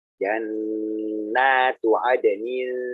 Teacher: Jangan lupa gunahnya ditahan lama non tasdidnya.